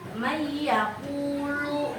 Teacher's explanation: Idgham biguna adalah dengung. Jadi bacaan kalian tuh harus dengung ya. Kayak harus ditahan.